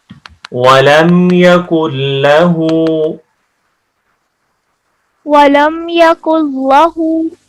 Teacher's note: اس لام کو موٹا نہیں کریں گے، صرف اللہ کے لام کو موٹا پڑھتے ہیں۔